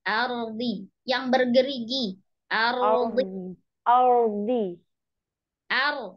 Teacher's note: ro itu ujung lidahnya diam di tempat tumbuhnya gigi seri atas